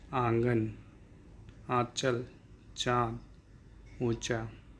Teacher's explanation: इनका उच्चारण नाक और मुख दोनों से होता है, इनके उच्चारण करने में मुख से अधिक तथा नाक से कम सांस ली जाती है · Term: अनुनासिक ध्वनियाँ